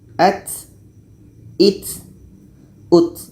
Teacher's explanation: Poinnya hamas ini ada semacam angin yang keluar atau ada semacam nafas yang mengalir yang keluar.